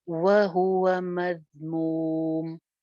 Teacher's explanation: मज जाल बगैर सीटी के